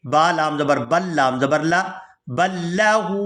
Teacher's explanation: یہاں با کو لام مشدد کے ساتھ ملائیں گے